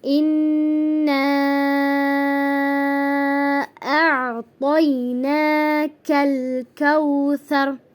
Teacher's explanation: اب یہ اِنَّا، اس کو ہم 5 سیکنڈ تک 5 حرکات کے برابر کھینچ کر پڑھیں گے، 3 سے 5 تک۔ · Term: مد منفصل